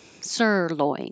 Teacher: sirloin, the stress is on the first syllable